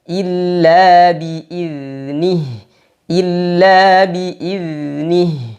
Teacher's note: Zal sifatnya rakhawah, maka suaranya dialirkan, tapi tidak boleh ada nafas. Tidak boleh juga ada suara sofir, suara tajam seperti zai. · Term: Zal sukun